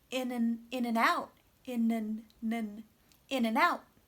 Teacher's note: Good. Also, small words like and become very small vowels, such that it almost just sounds like n, like a schwa and an n.